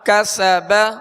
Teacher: سین میں سختی سیٹی کی آواز ہوگی اور اس کو باریک پڑھیں گے